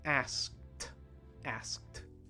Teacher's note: the ending ed for many past tense verbs actually makes a t sound at the end even though it's spelled ed so asked asked try it one